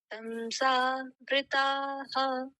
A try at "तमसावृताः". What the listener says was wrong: हाँ आहा, क्योंकि ये जो आ है उसको थोड़ा सा और लंबा खींच करके आहा। अब जैसे जनाहा, और इससे पहले देखिए, जैसे अभी आया नहीं है, जैसे हाँ शांति ही, उसको ऐसे खींचना है, शांति ही।